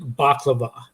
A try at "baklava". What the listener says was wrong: It's baklava. It's pronounced baklava. You don't use the V. It's supposed to be a W.